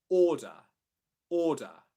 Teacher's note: at the end of a word or in an unstressed syllable position, you can have a schwa sound which replaces the R spelling